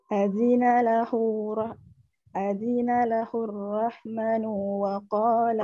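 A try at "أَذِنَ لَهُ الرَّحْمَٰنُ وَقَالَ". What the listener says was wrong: Kelihatan ada tanda panjang nggak di situ di huruf mim? Mimnya di situ ada tanda panjang. Oke, memanjangkan huruf di akhir katanya masih banyak nih.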